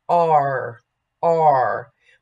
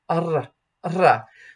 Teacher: Some consonants are pronounced toward the back of the mouth in English, R, R, but toward the front of the mouth in Italian, R, R. So be sure that your Italian consonants are forward and not back.